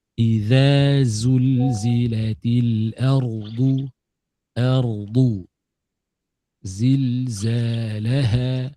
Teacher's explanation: Za zu za zu satu ada safir, satu tak adah. Huruf zai yang panjang ada safir ada bunyi z.